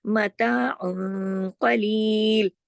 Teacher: عین دو پیش ان کی تنوین ہے اور اس کے بعد قاف آ رہا ہے، لہٰذا یہاں اخفا ہو رہا ہے حقیقی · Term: اخفا حقیقی